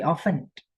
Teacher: Tapi ingat, kata often T-nya tidak dibaca.